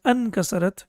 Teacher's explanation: it's not possible to pronounce Hamzatul Wasl, so that's why it is dropped completely and it becomes Ankasarat